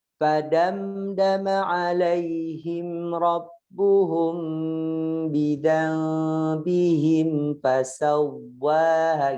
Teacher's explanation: Wawunya tasjid maksudnya bukan dipanjangkan bunyinya, tapi ditekan.